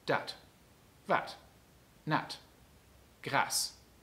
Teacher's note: Das kurze A ist ein ganz normales A. Wenn überhaupt anders, dann ist es eher heller als im Hochdeutschen.